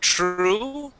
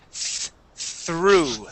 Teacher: Instead of true, it is through. Unvoiced TH.